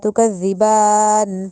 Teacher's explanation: تکذی میں جو ذال نرمی سے ادا ہوگا، وہاں پہ کھڑی زبر ہے تو اس لیے ہم نے لمبا کیا